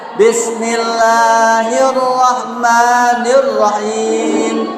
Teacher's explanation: ketika membaca huruf atau mengucapkan huruf ro maka getarkan lidahnya